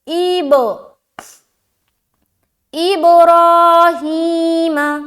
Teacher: با میں قلقلہ کریں گے، یعنی کہ آواز کو ٹکرائیں گے۔ قلقلہ کے معنی ہی ہے ٹکرانا۔